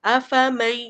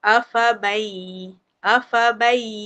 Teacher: dia ghunnah dia mesti masuk hidung